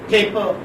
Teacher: First pa is aspirated and second pa is not.